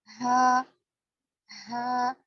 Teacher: वाव। हा, हा गले के नीचे वाले हिस्से से निकलता है जो बिल्कुल सीने के करीब है। हा और हमजा दोनों का मखरज देखिए, गले के नीचे वाले हिस्से से अदा होगा।